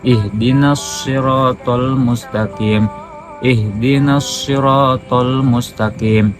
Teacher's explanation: Yang ketiga Khalat dari Hamzah, hanya di sini membaca dengan ismam, berarti Ihdinas Shiratal Mustaqim ihdinas siratal mustaqim, dimonyongkan mulutnya. Jadi yang namanya ismam itu dimonyongkan.